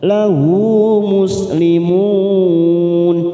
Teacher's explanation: muslimun mat arid lisukun 4 harokat kita panjangkan